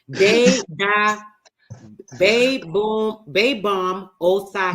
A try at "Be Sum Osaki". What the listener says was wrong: No. The B is silent. It's Sum. Be Sum Osaki. Be Sum Osaki. Because the BS don't have a sound.